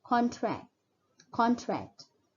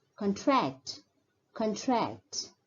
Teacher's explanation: for the word used as a noun, the stress is more on the first syllable, contract, contract. Whereas as a verb, the stress is more on the second syllable, contract, contract.